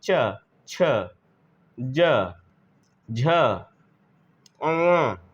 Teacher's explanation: च तो जीव तलवे को क्या करती है स्पर्श करती है तो स्पर्श व्यंजन भी है और उच्चारण स्थान इसका ताल है तालू है · जो हमारी जीभ है वह तलवे को स्पर्श करके ध्वनि निकालती है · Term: तालव्य व्यंजन